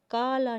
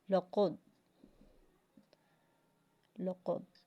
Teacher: تو جب بھی جو ہے یہ زبان کا جب بھی اقصی لسان یعنی کوے سے نیچے والا زبان کا حصہ اگر وہ نرم تالو سے لگ جائے تو قوف ادا ہوگا